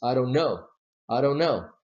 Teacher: the stress is stronger on the last syllable